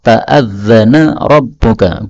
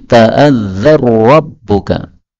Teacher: nun ketemu ra, ta'adzana rabbuka, boleh idgham menjadi ta'adzar rabbuka